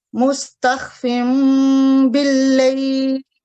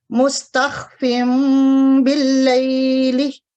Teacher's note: نون ساکن کی جو آواز ہے وہ میم میں بدل جائے گی